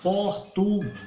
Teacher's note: A sílaba tônica é guês.